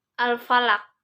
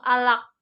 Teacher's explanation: terakhirnya itu kan ada qaf sehingga dibaca memantul keras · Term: qalqalah kubro